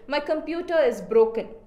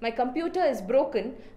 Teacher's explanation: I am focusing on computer and I am focusing on broken. More than my and is, I am focusing on these two words. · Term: sentence stress